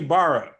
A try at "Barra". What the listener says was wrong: Baja. That's pronounced Baja, by the way. It's pronounced Baja. I know it has the R's, in Portuguese, the two R's is pronounced with a J or like a ha sound.